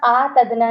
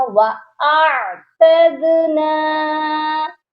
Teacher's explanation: حمزہ کے ساتھ عین ساکن ہے تو عین کی آواز بھی آئے گی، یہ پڑھا جائے گا وَأَعْتَدْنَا، دال پر قلقلہ کریں گے.